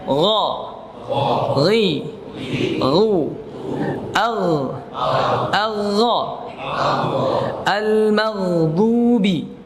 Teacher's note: Kemudian ya, huruf ghain, kita kembali ke huruf ghain. Huruf ghain makhrajnya ada pada tenggorokan atas, ya. Tenggorokan atas yaitu akar lidah menempel dengan langit-langit atas. Ya, dia punya sifat jahr dan ia punya sifat rakhawah. Ya, dia punya sifat istila, pangkal lidahnya terangkat.